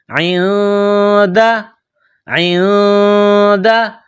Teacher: عین، گلے کے درمیان سے عین کو نکالیں گے، عین کے نیچے زیر ہے، اس کے بعد نون ساکن ہے، نون کے اوپر جزم کا نشان ہے، تو عین اور نون کو ملائیں گے، اور نون ساکن کے بعد دال ہے تو نون ساکن پر غنہ کیا جائے گا۔